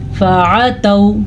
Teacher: فا کو لمبا نہیں کرنا, عین کو لمبا نہیں کرنا, نہ ہی تا کو لمبا کرنا کیونکہ آگے واو لین ہے, واو لین بھی لمبا نہیں کیا جاتا.